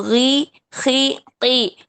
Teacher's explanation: غی، خی، قی صرف اپنے مخرج سے ادا کریں، ان کی تفخیم کا لیول جو ہے بہت کم ہو جاتا ہے، تو اس لیے ان کو غوئی، خوئی کر کے ادا کریں گے، موٹا کرنے کی کوشش کریں گے تو اس میں واو کا ایڈیشن ہو جائے گا جو کہ نہیں ہونا چاہیے۔